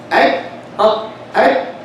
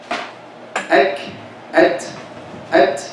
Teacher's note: Shiddah is applied first, and right after shiddah, hams is coming. Ak, ak, that's shiddah, ak. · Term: starting with shiddah